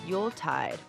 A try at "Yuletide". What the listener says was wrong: You say it like it's 2 words.